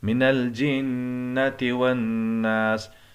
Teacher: ناس کے اندر نون پر غنہ کریں گے، اس لیے کہ نون مشدد ہے